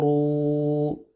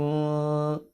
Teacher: را کو پر پڑھیں گے واو پہ مدہ کریں گے